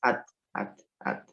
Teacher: Huruf ta itu saya ulangi, letaknya di ujung lidah mengarah ke pangkal gigi seri atas.